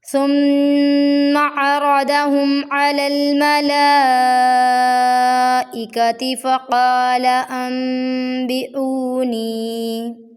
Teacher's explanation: ثم عرضہم علی الملائکۃ فقال انبئونی، یہاں پر مدہ جائز ہے اور یہاں پر وقف کی علامت آئی ہے، یہاں پر ہم ٹھہریں گے نہیں، یہاں ہم پڑھ کر جائیں گے۔ فقال میں قاف کو ایک الف کے برابر لمبا کیا جائے گا، لام کو ہم بالکل بھی سٹرینچ نہیں کریں گے، فقال اس طرح سے کریں گے تو یہ غلط ہو جائے گا۔